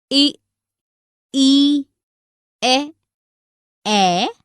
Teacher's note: जिन स्वरों के उच्चारण में जीभ का अग्र भाग ऊपर नीचे होता है, उन्हें अग्र स्वर कहते हैं। इ, ई, ए, ये 4 अग्र स्वर हैं।